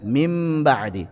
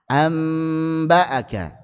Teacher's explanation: setelah diubah jadi mim maka disertai dengan ghunah yang dipanjangkan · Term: iqlab